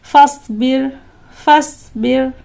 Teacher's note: را ساکن کے پہلے با کے نیچے زیر ہے، لہٰذا اس را کو بھی ہمیں باریک پڑھنا ہے